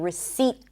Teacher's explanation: Now, the P is also silent in the word receipt. The T is pronounced, by the way. It's held. This is why you're not fully hearing it